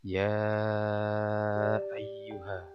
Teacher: Ini adalah bacaan mad jaiz munfasil. Cara bacanya panjang 2 sampai 5 harokat. Disebut mad jaiz munfasil adalah karena ya ini adalah mad tabi'i bertemu dengan hamzah di lain kata.